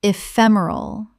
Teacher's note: four syllables with the stress on the second